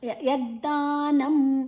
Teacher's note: ದ ಮತ್ತೆ ದ ಎರಡು ಅಲ್ಪಪ್ರಾಣಗಳು